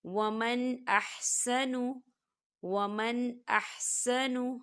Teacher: ومن احسن، ومن ایسے نہیں پڑھیں گے، ہم یہاں غنہ نہیں کریں گے، ہم اسے صرف ظاہر کریں گے اور اسے جلدی سے پڑھیں گے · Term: اظہار